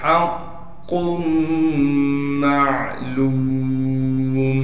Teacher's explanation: تو قاف کو میم سے ملانا ہے غنہ کے ساتھ، میم کو آگے عین سے ملا دیں گے اس لیے عین ساکن ہے، عین کو صاف کر کے گلے سے نکالیں گے۔ لام کو آگے واو مدہ سے ملا دیں گے اس لیے کہ واو ساکن ہے، میم کو وقف میں ساکن کر دیں گے اور لام کو 1 الف کی مقدار کھینچنا ہے۔